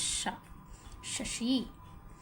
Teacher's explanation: जैसे हम श बोलते हैं तो इसमें शा सीटी की जो आवाज़ है वो ज़्यादा देर तक है और सा थोड़ा बोला जाता है, जैसे शा, शशि। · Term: ऊष्म वर्ण